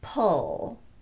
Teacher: Notice that my lips are not protruding very much at all.